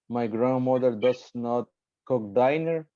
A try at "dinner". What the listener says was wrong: you say diner or dinner didn't um okay dinner is correct repeat the example saying dinner please